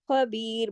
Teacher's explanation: بی کو ہم نے کیوں کھینچا بی کے ساتھ یا مدہ ہے